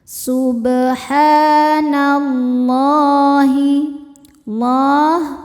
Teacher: Karena alif lam menghadapi huruf syamsiyah yaitu lam, maka alif lam tidak dibaca dari nun masuk langsung ke lam berikutnya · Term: alif lam syamsiyah